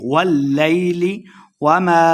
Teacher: الف مد 2 حرکات لمبا کریں گے